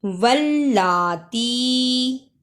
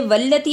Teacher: لام پر شد اور کھڑی زبر ہے، اس لیے اسے تھوڑا لمبا کرنا ہے. واللاتی یاتینا، جس الف کے اوپر جزم ہو اس کو تھوڑا جھٹکا لگا کر پڑھتی ہیں.